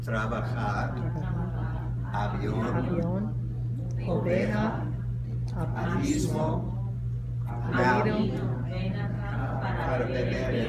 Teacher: The soft V again, the lips just touch one another, but not as forcefully as in English.